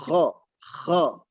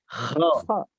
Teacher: Kita mendengarnya seperti huruf O memang. Kho-nya. Tetapi ingat, tidak monyong mulutnya. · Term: huruf kho